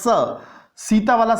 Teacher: स सीता वाला स जब बोलते हैं तब दांतों की जीभ स्पर्श करती हैं।